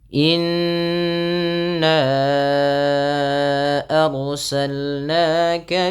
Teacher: ditahan bunyi suara nnya dipanjangkan dua harakat karena ia terdapat bacaan ghunah